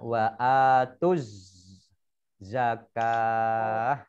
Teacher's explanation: Kemudian ini mim suku mim domah ni wawu alifnya tidak dibaca karena bertemu dengan alif lam syamsiyah. Ya, alif lam syamsiyah itu langsung masuk ke huruf berikutnya, yaitu di sini huruf shad ditandai dengan ada tasdidnya sehingga dibaca langsung masuk ke huruf shad.